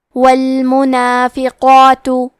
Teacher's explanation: کلمت المنافقات میں حرف القاف ہے اور اس پہ کھڑا زبر ہے تو یہاں مد الف ہے، تو ہم قاف کو اور مد الف کو دونوں کو تفخیم سے پڑھیں گے اور حرف التا کے پیش کو ظاہر کریں گے۔